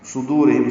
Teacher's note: صاد پر پڑھیں گے، دال باریک پڑھیں گے، واو مدہ ہے، یہ دو را باریک ہے، ہم میں اظہار شفوی ہے.